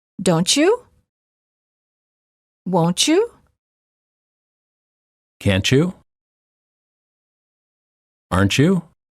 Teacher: Final T plus Y is usually pronounced as ch, as in church.